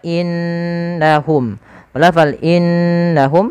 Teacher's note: ditahan suara nunnya karena di sini ada bacaan gunah